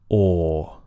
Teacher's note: the OR vowel is long and still. Everything stays still during that vowel sound.